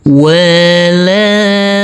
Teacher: Huruf nun yang bertasdid ini karena ini adalah bacaan ghunah maka harus kita tekan, kita tahan, serta kita dungkan.